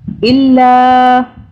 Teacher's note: چھوٹی مدہ ہے 3 الف کے برابر کھینچا